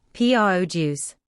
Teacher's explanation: Note the stress is on the first syllable, produce. As a verb, to produce, the stress is on the second syllable.